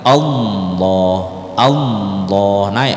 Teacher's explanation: ketika menyebut lafaz Allah yang tebal ini kita angkat semua lidah kita. Lidah naik semua ke langit-langit. Allah, Allah, naik ke semua ke langit-langit.